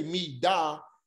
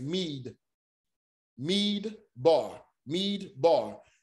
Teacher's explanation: let you know that you don't say me da the mead the d joins to the syllable which makes mead